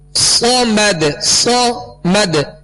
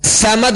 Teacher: صاد کو سیٹی کی آواز میں سختی سے ادا کریں گے اور پر پڑھیں گے، باریک نہیں پڑھیں گے